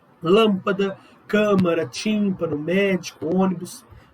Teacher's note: E proparoxítonos, que é a clichêzona que os vestibulares gostam, é quando a sílaba tônica ela é a antepenúltima sílaba da palavra. E todas são acentuadas.